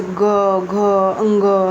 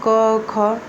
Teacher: क और ख में कोई गले में घनघनाहट नहीं हो रहा होगा, कोई कंपन नहीं हो रहा होगा